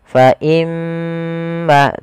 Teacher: Fa imma, pada lafal imma di sini ada huruf mim yang berharakat tasydid, kita hukumi dengan bacaan gunnah. Cara membacanya adalah menahan suara gunnahnya. Fa imma, tidak langsung fa imma.